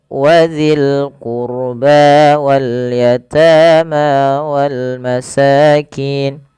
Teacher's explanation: Kemudian wadzil qurba wal yatama wal masakin. Pada lafal qurba tebalkan ro-nya karena huruf ro sukun didahului dengan dhamma.